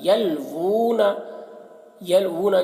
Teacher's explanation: واو کے اوپر الٹا پیش ہے تو الٹا پیش کو ایک الف کے برابر کھینچ کر پڑھیں گے